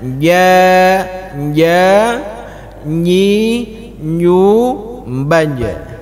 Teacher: Lidah kita itu bahagian tengah harus kena dengan langit-langit. Ja, ja tanpa berangin. Kalau berangin itu sudah geser ke depan, Pak. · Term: huruf jim